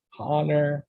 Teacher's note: there's a very faint h sound in there